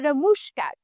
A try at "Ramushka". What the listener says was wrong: Well, I would stress the A, so it's a Ramushka, but it's a weird last name, so whatever.